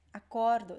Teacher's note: the stress is in the middle